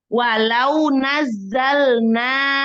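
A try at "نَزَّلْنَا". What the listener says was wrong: Nazzalna. Nazzalna. Zainya nggak lulus ya sayang. Coba cuman ini aja. Nazzalna aja.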